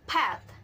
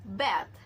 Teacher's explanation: So P and B are different in voicing. P is voiceless while B is voiced. But both of them are same in place of articulation and manner of articulation, which is bilabial plosive. So bilabial plosive is sound using upper lips and lower lips, and both of lips are held tightly enough to block the passage of air.